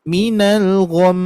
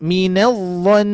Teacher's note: Minal gham itu tidak akan pendengar itu tidak akan merasakan bahwa di situ mimnya bertasydid. Jadi kalau misalkan mim dan nun bertasydid itu sudah dilengkapi dengan dengungan